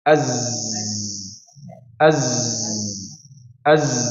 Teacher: Huruf za ini ketika kita ucapkan ini menggetarkan pita suara.